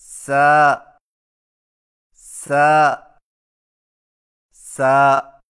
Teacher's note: اور سین کی آواز سیٹی والی ہوتی ہے